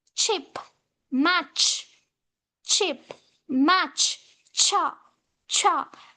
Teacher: First, it starts with plosive, and again immediately it follows with a sha sound. Ta, sha, cha. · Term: affricate